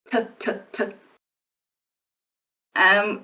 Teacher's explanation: And you should feel a pretty strong puff of air when you say that t sound. T, t, t. Which you won't feel as much when you say d.